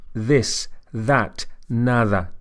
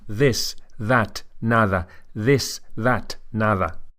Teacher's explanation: tip of the tongue touching the teeth as in the English words this or that